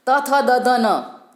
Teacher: जीभ जब दांत से स्पर्श करती है तो ये दंतव्य ध्वनियाँ निकलती है